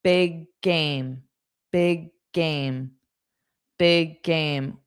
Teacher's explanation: When you have the same sound with both that ends and starts, you only need to pronounce one. Big game. And it's always on the second sound.